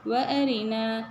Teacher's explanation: நூன்க்கு பக்கத்துல பாருங்க மத்து அஸ்லி டூ கவுண்ட் நீட்டணும்